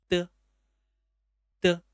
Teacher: When pronouncing, first press the tip of the tongue against the upper gum. And at the moment when the tip of the gum is removed, read it out. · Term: The initial, de